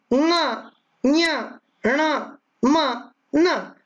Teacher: प्रत्येक वर्ण के पंचम वर्ण ङ, ञ, ण, म, न का उच्चारण नासिका से भी होता है, और इसीलिए इन्हें अनुनासिक भी कहा जाता है।